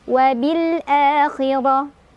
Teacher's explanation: Ro-nya dibaca secara tafkhim karena ro-nya berbaris fathah. Jadi ditebalkan.